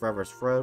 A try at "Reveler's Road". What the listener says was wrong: It's Reveler's. No, there's an L in there, so... Reveler.